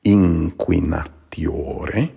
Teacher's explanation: The N would be pronounced more like an NG sound.